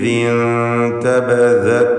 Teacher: ഇൻതബദത് എന്ന് പറയുമ്പോൾ സാക്കിനത്തായ നൂനും ശേഷം താഉമാണ്. ഇഖ്ഫാ ഹഖീഖി എന്ന ഹുക്മ നൽകി മറച്ചു മണിച്ചുകൊണ്ട് നൂനിനെ ഉച്ചരിക്കണം.